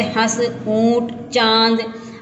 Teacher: अनुनासिक में इसके उच्चारण में वायु नाक व मुंह दोनों से निकलती है। चांद, नाक से भी निकली और मुंह से भी निकली।